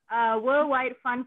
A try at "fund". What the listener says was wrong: Worldwide fun, not foundation. F-U-N-D, not F-U-N, man.